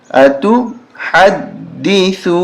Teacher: دال مشدد ہے سختی کے ساتھ پڑھیں گے دال پہ زور دیں گے